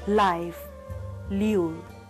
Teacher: La is produced with the tip of tongue, making a firm contact against the teeth ridge. The vocal cords vibrate. The sound thus produced is voice alveolar lateral.